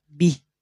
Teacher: dibaca panjang dua harakat tapi manakala waqaf sama tidak berubah Maaf tidak dibaca bihi dia berubah kasrah berdirinya berubah menjadi sukun